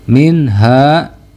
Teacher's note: idhar halqi sebab nun sukun bertemu dengan huruf ha